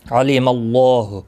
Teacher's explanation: اللہ کا لام زبر کی وجہ سے پر پڑھا جائے گا